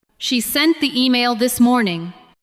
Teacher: Stress sent, email, and morning.